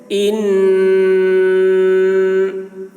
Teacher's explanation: نون مشدد ہے، نون کے اوپر تشدید ہے، جس نون پہ تشدید ہو اس کو نون مشدد کہتے ہیں۔ نون مشدد میں غنہ ہوتا ہے، یعنی نون کی آواز کو ناک میں لے جا کر گنگناتے ہیں